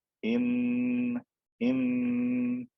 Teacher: against the inside of my mouth right behind the top teeth but i'm also adding air through my nose so noon has two parts it has a mouth part and it has a nose part · the same place i'm taking the tip of my tongue and i'm pushing it up against the inside of my mouth right behind the top teeth but i'm also adding air through my nose